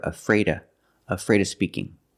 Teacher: when you have the sound in of before a consonant sometimes people don't pronounce the sound so you hear a freta afraid of speaking don't be afraid